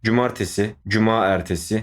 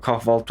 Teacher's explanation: iki ünlü yan yana gelmiş ya bunlardan bir tanesini alıyor bir tanesini eliyor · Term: ünlü düşmesi